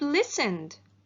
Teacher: The verb listened, the ed ending sounds d, because the verb listen ends in the voiced sound n